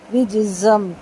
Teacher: رجزم جیم کے اوپر قلقلہ، اور زا کی تنوین کے بعد میم ہے، زا کو سختی سے ادا کریں گے. رجزم ٹھیک ہے، اور تنوین کو میم سے ملائیں گے.